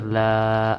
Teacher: الف مدہ ایک الف کے برابر لمبا ہوگا